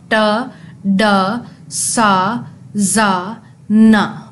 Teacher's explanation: आपकी tip of tongue जो है वो एलविल रिज से जाके टकराती है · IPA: /t/, /d/, /s/, /z/, /n/